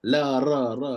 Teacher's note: lam dengan ra ni datang daripada makhraj yang sama